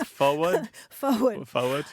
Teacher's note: there's no R in forward and if there is it's optional